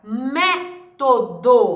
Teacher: método é uma palavra proparoxítona a sílaba tônica na antepenultima sílaba